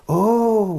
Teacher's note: How do you say oh? Oh, your voice is going up. Rising intonation.